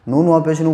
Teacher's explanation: واو ساکن سے پہلے نون کے اوپر پیش ہے اس لیے واو مدہ ہوگا اور اسے تھوڑا کھینچ کے پڑھیں گے